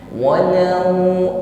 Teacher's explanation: Bagus, dimulai dengan huruf wau, makhrajnya adalah shafatain. Kedua bibir membulat ke depan.